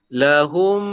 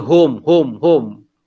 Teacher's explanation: Mim ni kan dimasukkan ke huruf mim yang kedua. Dan didengung 2 harakat.